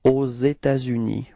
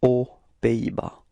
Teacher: There is this liaison between this final S of État and then this U